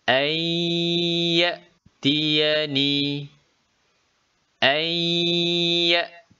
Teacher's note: Bunyi nun dimasukkan ke dalam huruf ya. Seolah-olah bunyi nun itu hilang. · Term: idgham bi gunnah